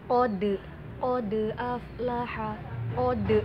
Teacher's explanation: dal itu kan huruf qalqalah dan dalnya itu berharokat sukun, maka dia harus mantul